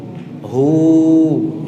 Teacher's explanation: Huruf halqiyah, huruf yang keluar dari halq, tenggorokan.